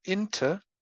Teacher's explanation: lenition or weakening, because a vowel is produced as a schwa